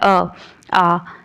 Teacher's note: जैसे कि हमने बोला आ, तो हमारा मुंह गोल नहीं हुआ है, ओंठ गोल नहीं हुए उस टाइम पे,